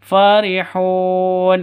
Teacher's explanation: farihun ini Panjang boleh dua boleh empat boleh enam ketukan karena Mad Arid